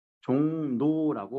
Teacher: 종로가 이응의 비음의 영향을 받아서 뒤에 있는 리을이 종노라고 받기도 해요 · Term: 비음화